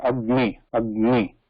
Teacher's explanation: This nasal sound is sandwiched between this Ka and Ma, and in this case Ga and Na. So that subtle, very short nasal sound is called Yama.